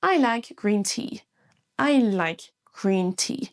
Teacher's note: Mais dans green et t on traîne un peu plus sur la syllabe. C'est ce qu'on appelle un i long